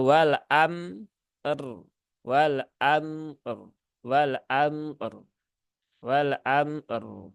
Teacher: kedua-duanya antara mim dengan ro, dia sifatnya sama, yaitu sifatnya tawasud